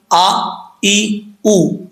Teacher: حمزہ کے اوپر زبر زیر پیش ہو تو حمزہ سختی سے پڑھا جاتا ہے، جھٹکے سے نہیں